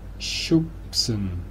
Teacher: Aquí la S es sorda. En combinación de B y S, aquí la B se hace dura y se pronuncia como si fuese una P.